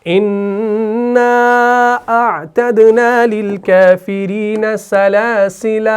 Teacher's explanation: اِنَّا أَعْتَدْنَا لِلْكَافِرِينَ سَلَاسِلَ, وقف کیا تو الف کو پڑھا